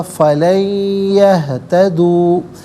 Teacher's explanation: دیکھیں نون ساکن ہے، اس کے بعد یہتدو میں یا ہے، نون ساکن کو یا کے ساتھ ملا کر یا کی آواز کو غنّے کے ساتھ ادا کریں گے